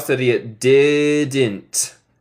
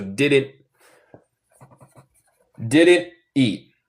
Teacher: En inglés neutral sería didn't. En el acento estadounidense, el T final, decimos, se llama un glottal stop. So, básicamente, como el T, pero también hay un pausita donde yo pausa el sonido en mi garganta por un momentico.